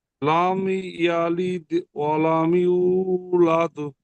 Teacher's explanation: মিম সাকিনের পরে বা মিম ছাড়া অন্য অক্ষর ইয়া এসেছে, তাই মিমকে বিনা গুণায় পড়তে হবে। একে ইজাহারের স্বাভাবী বলে।